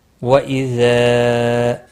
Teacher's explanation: مد منفصل ہے، تین الف کے برابر کھینچ کر پڑھیں گے